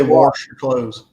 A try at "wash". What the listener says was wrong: There's no R in wash.